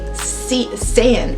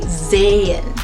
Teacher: the letter s is not even pronounced that way it's pronounced as a z